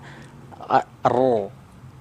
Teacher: karena dia berharakat fathah maka huruf rnya harus dibaca tafkhim tebal